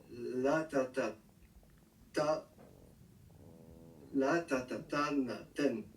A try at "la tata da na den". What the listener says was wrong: La tata da na den. Le ta a aussi la particularité d'être prononcé da quand il y a une construction de ce genre. La tata da. Donc c'est autant valable quand il y a un préfixe avant que quand il y a une lettre au-dessus.